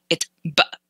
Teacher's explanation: One way to illustrate what the glottal stop feels like is when you say the word uh-oh, the space in between uh and oh